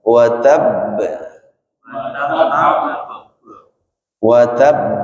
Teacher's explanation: qalqalah yang terjadi di akhir bacaan dan huruf qalqalahnya bertasydid. Maka nanti beda cara bacanya, bukan watab ya, bukan watab, tapi ditekan. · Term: qalqalah akbar